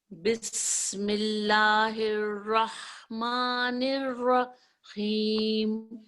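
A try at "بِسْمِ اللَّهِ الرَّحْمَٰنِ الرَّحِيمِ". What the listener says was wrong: اچھا یہ جو لام ہے نا بسم اللہ یہ اسم جلالہ کا جو لام ہے یہ موٹا نہیں ہوگا. کیوں نہیں ہوگا کہ اس سے پہلے جو ہے نا زیر لگی ہوئی کسرہ ہے.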